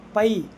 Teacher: ஏன்னா பை அப்படின்றது தனித்து இருக்குது. அப்போ தனித்து வரக்கூடிய இடத்துல ஐ வந்தால் அதனுடைய மாத்திரை அளவு 2.